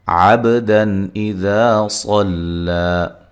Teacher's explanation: با پہ قلقلہ کرنا ہے